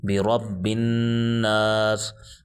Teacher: را کو پر پڑھا جائے گا کیونکہ را کے اوپر زبر آ گئی ہے، را پر زبر اور پیش ہو تو را کو پر پڑھتے ہیں اور زیر آ جائے تو باریک پڑھتے ہیں۔